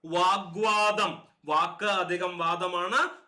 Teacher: പൂർവ്വപദത്തിന്റെ ഒടുവിലുള്ള ഖരവർണ്ണം മൃദുവായിട്ടുണ്ട്